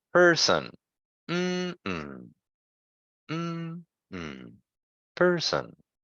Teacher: 2 syllables. The first syllable is stressed.